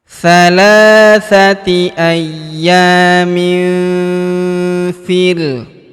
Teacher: tanwin innya melebur ke huruf fi, kita baca dengung dan samar. Dengungnya kita tahan 2-3 harokat.